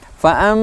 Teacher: Fa'amma mim tasydid, hukum bacaannya adalah hunnah, dibaca dengan dengung. Fa'am, maka tidak akan keluar suara kalau ditekan hidung kita.